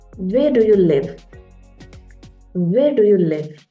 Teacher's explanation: so I'm not Rising my voice